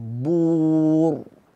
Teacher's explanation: fil qubur dibaca tebal qubur mulut moncong